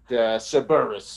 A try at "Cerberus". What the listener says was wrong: I feel like you're saying it as two words, but it's just one word, okay? Just Cerberus.